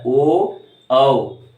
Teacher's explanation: कंठोष्ठ में ओ औ, कंठ से निकल रही है और होठों का भी इस्तेमाल हो रहा है, ओ औ, आवाज निकल रही कंठ से।